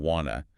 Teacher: You notice how sounds change want to becoming wanna.